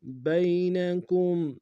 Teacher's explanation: با کو یا کے سامنے آئیں گے، یا لین بغیر کھینچے پڑھیں گے